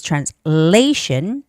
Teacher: Translation has a stress on the second syllable, which is translation.